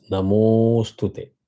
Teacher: That means while visarga and a is gone, you say namo and draw one avagra, means extend the matra of mo by one more matra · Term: avagraha